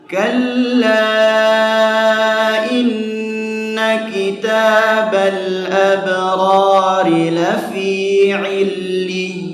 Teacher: Di situ ada sifat nabr ya. Harus diayunkan, dihentakkan ya. Jadi bukan illin ya, bukan mat itu, tapi ya bertasydid ya.